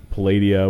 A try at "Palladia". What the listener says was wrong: Is it Palladia or is it Is it Putting the accent on the wrong syllable.